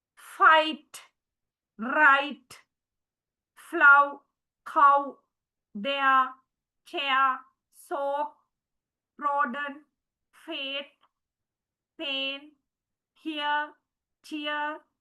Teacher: So here we can see it's not a single vowel sound. It's a combination of two single sounds together. So they are called diphthongs.